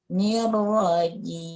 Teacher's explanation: huruf ja dengan keluarnya dari tengah-tengah lidah